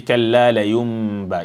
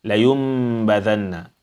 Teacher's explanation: the silent Noon, which is changed into Mim, or which has a little Mim on top, followed by Ba. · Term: Iqlab